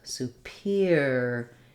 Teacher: it changes to an ear diphthong